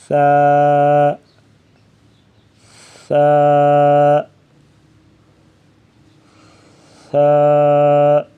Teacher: سا کی ادائیگی میں زبان کی نوک کو سامنے والے اوپر کے دو دانتوں کے اندرونی کناروں سے نرمی سے لگا کر پڑھیں گے باریک آواز میں